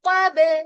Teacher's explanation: उसके बाद देखिए वकब वाव के लिए होठ बोल होंगे क और फिर ब तो कब कफ मोटा होगा ब लाइट होगा विद कलकला